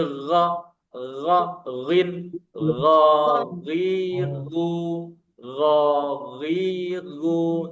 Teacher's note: Posisinya sama dia dengan kha. Ada di pangkal lidah atau di tenggorokan bagian atas ya. Nah, dia jahar. Beda kan dengan kha tadi.